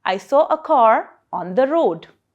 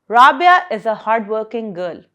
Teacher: I'm not putting so much stress on these words like a and the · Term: weak forms of a